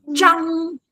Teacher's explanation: this is called retroflex, which means your tongue goes backwards, rolls backwards to do this one